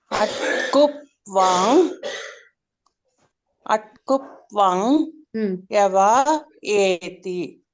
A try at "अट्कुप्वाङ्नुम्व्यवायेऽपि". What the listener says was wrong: నుమ్ నుమ్. నుమ్ ఉంది. మూడవది ఏంటి? నుమ్. అట్ కుప్వాంగ్ నుమ్ యవా ఏపి.